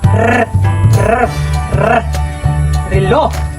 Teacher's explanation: Mabilis sa pagpitik ng dila sa alangala tulad ng r, r, r, relo.